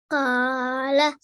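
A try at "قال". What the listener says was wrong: Better, okay, but it has to be different to this kaf here. If you were to read this, how would you read this kaf? You'd read it as ka, is that correct?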